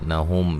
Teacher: میم ساکن کا یہاں اظہار غنہ نہیں کریں گے